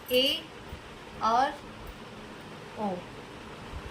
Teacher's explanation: अर्ध संवृत, इन वर्णों का उच्चारण करते समय मुख संवृत की अपेक्षा थोड़ा अधिक खुलता है, जैसे ए और ओ।